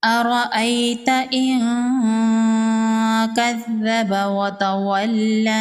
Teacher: نون ساکن کے بعد حروف اخفا میں سے کاف ہے، یہاں پر اخفا ہوگا، نون کی آواز کو ناک میں چھپائیں گے،